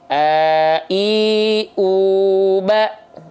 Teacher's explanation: Hamzah itu dilafalkan dari tenggorokan paling bawah atau sering disebut dengan pangkal tenggorokan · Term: huruf Hamzah